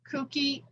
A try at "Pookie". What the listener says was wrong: It's Pookie with a P, but that's okay. Well, P is in Garfield's teddy bear, Pookie. Not, not Pookie.